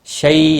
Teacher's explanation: یالین ہے، تھوڑا نرمی کے ساتھ کھینچ کر ادا کریں گے